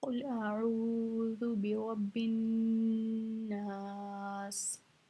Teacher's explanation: क़ुल का जो क़ाफ़ है ना, ये नुक्ते वाला काफ है, इसको हम मोटा पढ़ेंगे